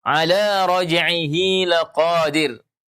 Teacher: Hi-nya, hak kinayahnya dibaca panjang karena diapit oleh dua huruf berharakat yaitu huruf ain dan huruf lam.